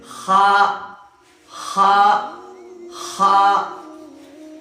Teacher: یہ خا کا مخرج جو ہے یہ انتہائی حلق، حلق کا آخری والا حصہ ہے، حلق کے آخری والے حصے سے جو ہے نا خا نکلے گا، جسے ہم کہتے ہیں خا خا خا۔